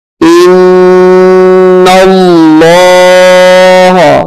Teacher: نون کو لام کے ساتھ ملائیں گے اور غنہ کریں گے